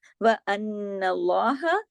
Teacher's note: نون پہ شد ہے اس لیے ان اللہ پورا حق ادا کرنا ہے، بڑا غنہ کرنا ہے